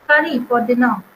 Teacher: So primary stress is given on curry and it is also given on dinner word. So we are giving more stress here and here for we are not giving more stress on for.